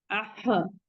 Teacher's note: हलक के दरमियानी हिस्से यानी वसतुल हलक में आवाज जाके रुक जा रही है